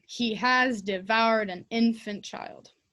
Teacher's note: the stress is on he who's doing it and d for devouring